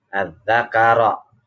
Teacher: ro-nya berharokat fathah, namanya ro tafkhim, ro-nya dibaca tebal